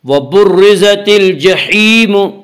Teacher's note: را مشدد متحرک کے نیچے زیر ہے اس لیے یہاں را کو باریک پڑھیں گے